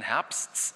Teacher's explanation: das klingt irgendwie auch so, als wäre bei dem P die Silbe eigentlich zu Ende und dann machen Sie halt noch T hinten dran. Komisch, wenn Sie darüber nachdenken. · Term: extrasilbisch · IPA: /t/